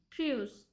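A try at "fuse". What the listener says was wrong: 윈디가 아랫 입술을 여기가 갖다 놔. 입술이 붙였다 떨어지면 안 돼. 그건 피가 내는 소리야.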